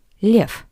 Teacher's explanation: the voiced consonant V at the end of this word sounds like the paired voiceless consonant F. V, F.